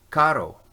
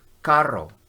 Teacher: You can hear the R. A double R is the same sound, but it's trilled more heavily. It's a little longer.